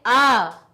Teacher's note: आ को बोलने में अधिक समय लगा, अर्थात इसमें 2 मात्राएं लगी